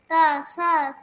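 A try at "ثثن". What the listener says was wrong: সা সা নুন। সেম হরফ। সা সা।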